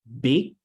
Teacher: For the first time that I say big, the final sound is not clearly pronounced.